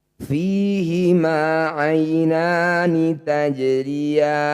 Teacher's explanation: Jim sukun namanya qalqalah sugro. Bunyi jim pantulkan tapi kecil saja.